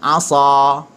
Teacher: Cuma huruf sad dia ada lekukan di tengah lidah. Pangkal lidah terangkat, lekukan di tengah lidah menghasilkan huruf yang tebal.